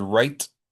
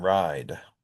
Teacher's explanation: one reason they sound different is because I raise the vowel when I say right. I don't say right. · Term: Canadian raising